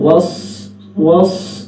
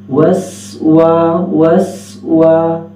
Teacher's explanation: سین کی سیٹی جیسے کہ عرض کیا تھا اس کی سیٹی باریک ہے، وس وس، صاد کی آواز نہ ہو، صاد کی سیٹی موٹی ہوتی ہے اور سین کی سیٹی باریک